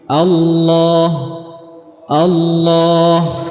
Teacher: mufakhamah artinya tebal dan perhatikan pangkal lidahnya ya naik di sana meninggi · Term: lam yang tebal